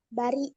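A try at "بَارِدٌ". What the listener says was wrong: Panjang. Nah, baridun panjang. Baridun.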